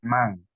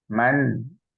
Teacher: Jadi bukan Mang bukan m a n g tapi m a n ya Man jelas izhar